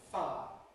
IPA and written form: faə (fire)